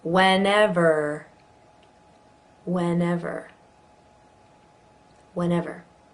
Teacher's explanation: So you'll notice in that one there are 3 different E's. The first 2 have an eh, and this third one is a schwa.